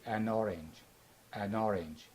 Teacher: We drop the a sound and we link between an and orange, and we pronounce it as an orange.